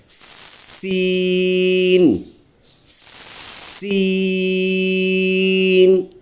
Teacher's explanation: آواز رکنا چاہے گے اور اس کو دکا دے کر اس کو ادا کرنا پڑتا ہے، اور اس میں سیٹی جیسے آواز ہم نکالیں گے تبھی یہ لفظ ٹھیک ہوگا۔ اس میں اور ثا میں فرق یہ ہے کہ وہ نرم ہے اور یہ سخت حرف ہے، سیٹی والا حرف ہے۔